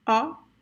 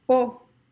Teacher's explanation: The closed O is pronounced with the mouth a little bit closer, much more closed than the open O.